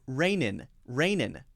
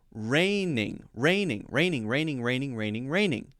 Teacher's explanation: would be using the ing sound or the ng sound twice it's got to be first the n sound then the ng sound